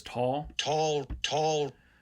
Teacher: the t is uh aspirated again uh and that's easy to hear